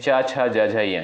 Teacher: च वर्ग के अंतर्गत जो भी वर्ड आपके आते हैं च, छ, ज, झ, य इनका उच्चारण स्थान होता है आपका तालु से